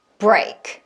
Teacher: 내가 언제 BR 하려고 그랬지? 약간 이런 느낌으로 B에다가 R의 입모양을 했더니 하고서 바로 BR 사운드 두 개를 같이 처리한 거예요. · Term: BR 이중자음